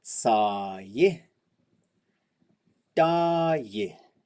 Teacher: this I will always be the opposite of the tone before it